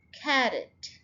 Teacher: इसके अंदर अगेन ये कैरेट 2 सिलेबल वर्ड है और स्ट्रेस्ड फर्स्ट सिलेबल के ऊपर आएगा